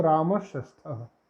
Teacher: मूर्धन्य सा हो गया, विसर्ग को मूर्धन्य सा हो गया